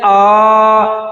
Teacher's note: इसकी मात्रा होती है दीर्घ अ अब फिर बोलते हैं आ तो दीर्घ हो गया इसको बोलने में दो मात्रा का समय लगता है